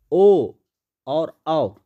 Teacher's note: ओ और औ बोलिएगा तो कंठ और ओष्ठ दोनों का उच्चारण हो रहा है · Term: कंठोष्ठ